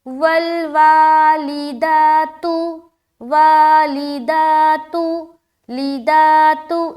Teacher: लाम और ता को अदा करते हुए अपनी आवाज़ को हमने मारूफ ही रखा, मजहूल नहीं होने दिया